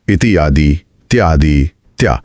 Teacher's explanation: इ की ध्वनि य में बदल रही है